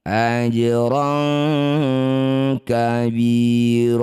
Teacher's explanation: bunyi fathah tanwin ron kita ganti jadi eng jadi rong dengung dua harakat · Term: ikhfa, ikhfa ab'ad